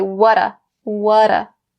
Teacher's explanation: we'll connect what and do and we'll say wa-da